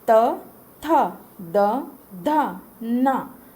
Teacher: आपकी जो टंग है, आपकी जीभ है, वो दांतों के माध्यम में आती है। इसीलिए आप देख सकते हो कि टंग तो यूज़ हो ही रहा है, जीभ यूज़ हो रहा है, लेकिन इसमें अंतर क्या है कि अब आपका जीभ तालु पर नहीं, मुड़ कर नहीं, दांतों के माध्यम से आवाज़ निकालने की कोशिश कर रही है। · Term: ता वर्ग